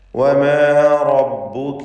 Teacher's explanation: റാഇന് തഫ്ഖീം കൊടുക്കണം, പൂർണ്ണമായ തടിപ്പിച്ചുകൊണ്ടുള്ള സ്വരഭാരത്തോടെയുള്ള ശബ്ദം നൽകുക. വമാ റബ്ബുക, മറ്റക്ഷരങ്ങൾക്കൊക്കെ തർക്കീഖാണ് എന്നത് ശ്രദ്ധിക്കുക.